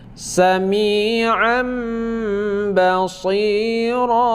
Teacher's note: iqlab membalikkan bunyi nun mati kepada bunyi mim